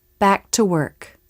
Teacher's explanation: notice i do make a light release of the k in the word work · without the release of the k in back the two words flow together more easily making it smoother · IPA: [k]